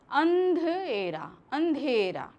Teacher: जब हम अंधेरा बोलते हैं तो सिर्फ हमारे नाक से ध्वनि निकल रही है, मुंह से बहुत ही कम निकल रही है।